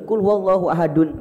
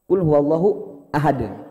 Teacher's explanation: Tanwin itu kalau diwakafkan, kalau diberhentikan tidak muncul nun itu. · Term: tanwin diwakafkan